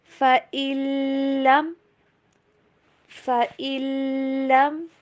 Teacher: نون کی آواز بالکل اسکپ کریں گے